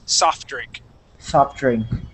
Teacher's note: soft drink uh without pronouncing that t